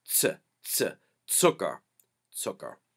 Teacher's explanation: Z's make a TS sound, and think like at the end of the word hats. You go to the T, T, and then go right to an S.